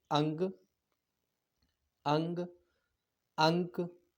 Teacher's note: नाक से अधिक सांस निकलती है और मुख से कम सांस निकलती है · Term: अनुस्वार